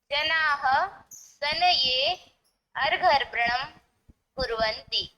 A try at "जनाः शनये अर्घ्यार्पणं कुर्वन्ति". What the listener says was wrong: अर्पणं तथा च अर्घ्य न। तर्हि अर्घ्यार्पणम्, अर्घ्य भवति न, पूर्वम् अर्घ्य अनन्तरम् अर्पणम्, अतः अर्घ्यार्पणम्। जनाः शनये अर्घ्यार्पणं कुर्वन्ति।